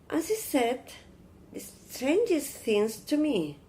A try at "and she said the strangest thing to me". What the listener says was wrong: Give a sentence stress on strangest. Like imagine something really strange and dark.